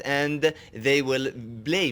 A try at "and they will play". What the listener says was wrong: And they will play consistent problems with the P, right? And they will play blah blah blah. It sounds like you're saying and they will play. Sounds like you're using the B instead of the P.